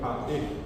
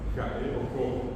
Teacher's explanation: Y otra cosa interesantísima, la J del castellano se parece a la G del guaraní, pero no es igual, porque si yo digo jae, la G del guaraní es suave, es aspirada, y la J del castellano es fuerte, es muy marcada